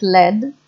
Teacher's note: Singaporean English with the lack of distinction between R and L